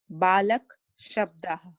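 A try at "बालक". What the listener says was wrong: Not balak. It is not balak. It is balaka. See, you are cutting the vowel.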